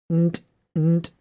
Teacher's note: So the reason why these are called nasal continuants is that the only way to continue them is to use your nasal passage, or you just end up, like if you do nt and you cut off your nasal, then you get a T, an unvoiced consonant